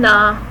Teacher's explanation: It is an alveolar nasal because it is produced by bringing the tip of the tongue close to the alveolar ridge. It is articulated in such a unique way that mouth is closed and the velum is lowered, but then the air is forced to go out from the nose, so it becomes a nasal sound.